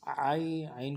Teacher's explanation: یائے لین کو بالکل نہیں کھینچیں گے، یائے مدہ کو کھینچا جاتا تھا